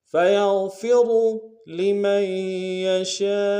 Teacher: غین کو گہرائی سے ادا کریں گے، اور را کو موٹا ادا کریں گے آخر میں۔ فَيَغْفِرُ لِمَن يَشَاءُ، لمن میں لام کو نون سے ادا کریں گے، میم کو آگے یا کے ساتھ ملانا ہے، یا کے اوپر تشدید زور دیں گے، نون کے ساتھ نہیں ملائیں گے، یا کے ساتھ ملائیں گے۔